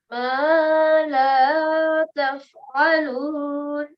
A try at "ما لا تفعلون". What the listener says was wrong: I noticed that this one that you have had pronounced one correct and one a bit short. So these both should be pronounced for 2 seconds equally.